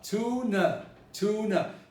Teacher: the second a becomes a schwa